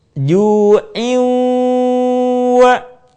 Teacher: suara kita sebagiannya masuk ke rongga hidung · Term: gunah